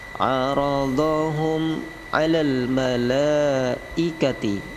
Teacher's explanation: la-nya panjang 5 harokat, mad wajib muttasil. Malaikati, ti pendek, jangan berhenti lama di ti.